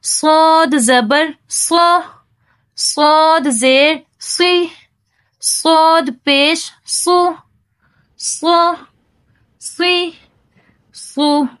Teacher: سب سے پہلے ہے صاد، اور یہ مفخم ہے یعنی موٹا پڑھا جانے والا حرف ہے